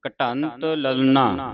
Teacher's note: ਲਲਨਾ ਇੱਥੇ ਵਿਸ਼ਰਾਮ ਲਾਉਣਾ ਹ। ਠੀਕ ਹ ਇਹ ਧਿਆਨ ਦੇਣਾ ਕਿ ਇੱਥੇ ਨਾਣੇ ਦੀ ਆਵਾਜ਼ ਨਾ ਉਚਾਰਨ ਹੋਵੇ ਨਨੇ ਦੀ ਆਵਾਜ਼ ਉਚਾਰਨ ਹੋਵੇ